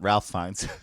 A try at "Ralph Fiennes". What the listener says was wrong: It is Ralph, but you actually pronounce it Rafe. It's Rafe Fiennes.